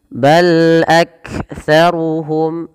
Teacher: Pada lafal bal lam sifat bainiyahnya tidak terlalu di alirkan suaranya dan tidak terlalu ditahan suaranya, tapi dia tengah-tengah